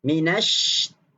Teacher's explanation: Tegaskan, tekankan, keraskan sedikit shin yang bertasydid itu. Sebab shin tu ada sifat tafasyi ketika mana dia bersabdu, maka perlu dijelaskan dan ditekankan tafasyinya.